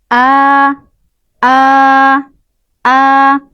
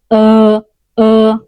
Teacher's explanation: ketika membaca huruf Hamzah tersebut, pangkal lidah kita tidak terangkat, ya. Dan cara membacanya cukup santai. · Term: istifal